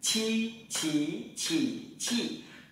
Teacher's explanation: Chúng ta vẫn tì toàn bộ mặt lưỡi xuống hàm dưới, đúng không? Nhưng hơi bật mạnh. Làm lại này. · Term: bật hơi